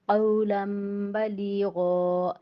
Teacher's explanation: نون ساکن یا تنوین کے بعد حرف با آ جائے اور اس کے اوپر چھوٹی میم ہو تو اس نون ساکن ہو یا تنوین کو ہم چھوٹی میم سے بدل کر اقلاب کریں گے